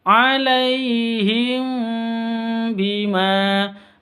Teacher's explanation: Mim mati bertemu dengan ba. Cara bacanya samar didengungkan karena ini ikhfa safawi, hukum mim mati ya.